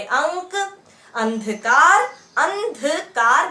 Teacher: अंधकार मतलब गले और नाक का दोनों का स्वर आएगा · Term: अनुस्वार